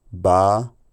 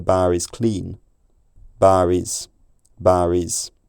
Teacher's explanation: a tendency to still pronounce r at the end of a word if it's immediately followed by a word starting with a vowel to avoid the two vowels directly contacting each other on its